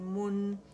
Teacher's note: ضمہ کے لیے میم کا مخرج پکڑ کے گولائی دے کے پھر نون اور ٹھیک ہے، گولائی دینا ضرور ہے، پھر نون ساکن پہ جائیں گے تو گولائی ختم ہو جائے گی۔